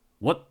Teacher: 릴리스를 하지 않은 거죠. 불파, 밖으로 안 내보겠다, 파일 안 하겠다 이 얘기예요.